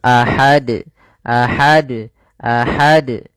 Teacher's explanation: harus dipantulkan karena dia termasuk huruf qalqalah kalau kita waqaf. Maka harus mantul ahad, ahad, ahad.